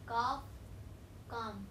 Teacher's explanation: They are not pronounced. That L in calf and calm are not pronounced. They are silent.